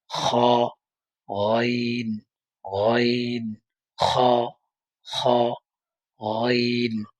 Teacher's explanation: কন্ঠনালীর শেষ ভাগ হইতে গাইন এবং খ উচ্চারণ হবে